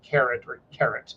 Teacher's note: pronounce the second syllable or the last syllable heavier it's where the emphasis is